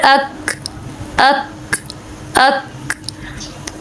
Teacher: تو پہلے ہماری آواز بند ہو گئی، یہ صفت شدت تھی، اور بعد میں ہمارا جو سانس ہے وہ باہر آ گیا، یہ صفت ہمس ہے اس کے اندر۔